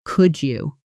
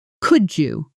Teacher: Could you blends into something closer to could you, the D and Y, sounds merging together into a soft J sound.